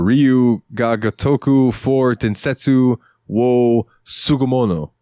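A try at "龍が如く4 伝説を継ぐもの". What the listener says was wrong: You pronounced 4 wrong. Wouldn't it be Shi or Yon?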